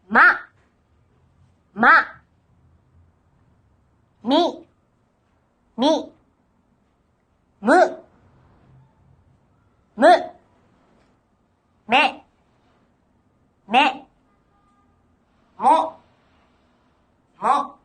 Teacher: The first set in this lesson contains the labial nasal sound m.